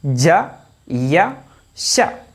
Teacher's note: ജീം യാ ഷീന് ഈ മൂന്ന് അക്ഷരങ്ങളും നാവിന്റെ നടുഭാഗം കൊണ്ടാ നമ്മൾ പറയാ